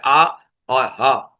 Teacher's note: حمزہ ہا جو نیچے والے حلق کے نیچے والے حصے سے نکلتے ہیں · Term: حرف حلقی